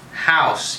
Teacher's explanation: the second element of the diphthong is non-syllabic. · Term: the diphthong ow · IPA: /aʊ/